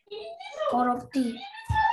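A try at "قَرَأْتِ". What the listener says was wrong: Korokti, betul.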